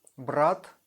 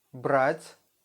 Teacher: The soft sign makes our consonant to be soft, but without any sounds after that. Examples. БРАТ, a brother in Russian.